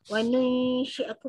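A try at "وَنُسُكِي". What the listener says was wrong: Wanu dia, dia banyak sangat. Dia jangan melebar sangat, jangan wanu. Wanu nu sikit je. wanul, wanul. Dia tetap lidah tengah, tapi cara dia landing lidah tu. Nul, jangan nui, jangan buka banyak ni. Wanul, nul, mi, mi, syarri, mi.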